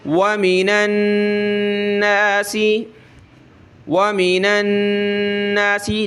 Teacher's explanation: نون کے اوپر یہ تشدید آ جاتی ہے تو وہاں غنہ کرنا ہوتا ہے، ناک میں آواز پیدا کرنی ہوتی ہے، اس لیے یہاں انہوں نے کلر دے دیا ہے کہ دیکھیں یہاں غنہ کریں.